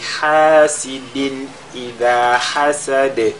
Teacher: nous avons tanwin suivi de Hamza, on fait al-izhar